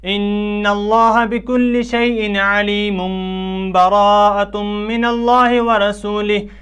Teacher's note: تنوین اور نون ساکن کو میم سے بدل کر غنہ کریں گے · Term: قلب